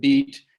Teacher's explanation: But you can see, you can try to teach that this is a high front vowel sound in the word beat